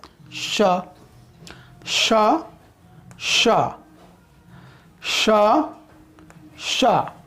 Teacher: यहाँ पर जीभ जो है मूर्धा में आकर सटेगा या सटने की कोशिश करेगा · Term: मूर्धन्य